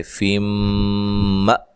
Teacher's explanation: نون تنوین کا ادغام مع الغنہ ہے اور یہاں حمزہ کو جھٹکے سے ادا کریں گے، م کاف کو باریک پڑھیں گے، کو و مدہ ہے تو وقف کی صورت میں مد کر سکتے ہیں، مأکول۔